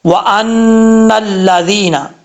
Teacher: نون کے اوپر شد ہے، ایک الف کی مقدار غنہ کر کے پڑھیں گے